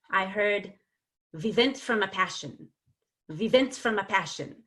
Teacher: I heard vivent from a passion of events from a passion so the W's became V's